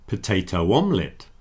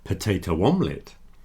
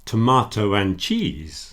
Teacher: You hear that little W that's reintroduced there.